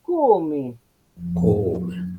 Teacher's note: En sílaba tónica, esta O habla de una O cerrada. No es una O normal, no es la misma O de rayo, es la de come.